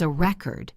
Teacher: The noun is a record with the stress on the first syllable.